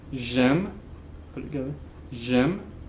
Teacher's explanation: notice that the silent E on the je is elided when the verb begins with the vowel sound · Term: heavy elision